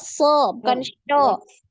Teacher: makrojnya kan di ujung lidah, bukan di tengah lidah ya. So. Ini malahan harusnya ujung tengah lidahnya ini enggak naik ya, tapi dia turun.